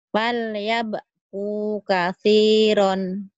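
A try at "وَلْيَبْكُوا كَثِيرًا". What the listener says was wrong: Wal, bukan pal. Wal yabku kathiron.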